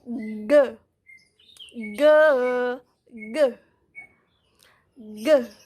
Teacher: you stop the airflow between the middle of the tongue and the top of the mouth. To produce the sound, push the tongue forward so the middle curls up and touches the top of your mouth and blocks airflow. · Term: G sound